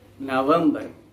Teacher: the stress here falls on the second syllable of the word december · the accent falls on the second syllable